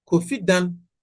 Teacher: So they refer to this as non-automatic downstep because in speech, the low tone that causes the downstep deletes. So you don't see the low tone there. It is not evident.